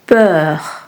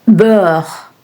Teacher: For the open EU sound, the mouth is a little more open.